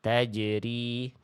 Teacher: Nama sifatnya jahr. Jahr itu artinya apa? Tertahan nafasnya. Jadi jangan sampai ada becek-beceknya.